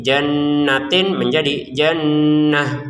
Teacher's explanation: Untuk kata jannatin perhatikan kita bacanya jannah untuk t-nya menjadi huruf ha. terbacanya ha ya karena kita berhenti